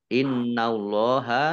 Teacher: nun tasdid dibaca lunah atau mendengung ditahan 2 harokat